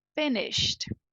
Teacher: não existe um som de e não existe voz não existe garganta vibrando aqui